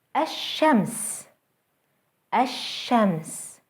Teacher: with an al followed by a sun letter a shems ashems notice how the sun letter is doubled and how the l sound is lost